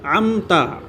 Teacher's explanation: ام میں میم ساکن کے بعد تا آ رہا ہے، میم ساکن کا اظہار ہوگا